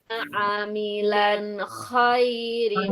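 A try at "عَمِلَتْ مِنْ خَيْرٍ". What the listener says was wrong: Amilat bukan amilan. Amilat tak.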